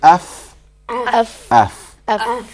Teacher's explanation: The inside of the lower lip and the tips of the two front incisors. So your top two front teeth touch the bottom lip. Touch the bottom lip and you get fa.